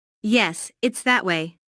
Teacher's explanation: Notice the stress on that. The speaker is pointing in a certain direction and wants to emphasize that direction.